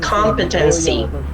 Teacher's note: The stress is on the first syllable